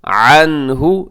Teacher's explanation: اغنى، جی آگے عنہ، عنہ، یہاں نون کے بعد ہاں حروف حلقی میں سے ہے تو یہاں اظہار کیجیے گا، عنہ، اسے اکثر انہو پڑھ دیا جاتا ہے، انہو نہیں بلکہ عین ہے۔